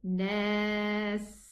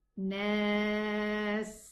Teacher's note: The sound of the sin is going to run. Nas, okay? It has a whistling sound that we have to show.